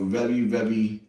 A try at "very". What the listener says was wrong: It sounds like you're saying rary, not very, very.